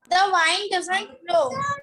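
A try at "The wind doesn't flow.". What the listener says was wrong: बेटा it's not वाइंड it's विंड।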